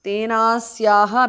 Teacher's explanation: Tena Asyaha, Tenasyaha because of sandhi. Visarga is dropped because of sandhi.